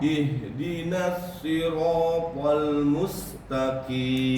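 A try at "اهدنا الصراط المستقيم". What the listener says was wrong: Sinnya dikecilkan desisnya. Mustaqim. Sekali lagi diulang.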